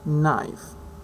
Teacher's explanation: n, which is voiced, lingual alveolar, nasal